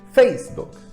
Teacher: A sílaba tônica está no face.